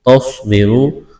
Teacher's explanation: سواد میں سیٹی کی آواز پیدا کریں گے، سواد کو موٹا کرنا ہے، را کو موٹا کرنا ہے، را کے اوپر پیش ہے، واو مدہ ہے، ایک الف کے برابر کھینچنا ہے۔